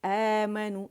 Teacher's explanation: آمنو یہ مد بدل ہے کیونکہ یہ الف جو ہے یہ حمزہ کی آواز کو کھینچا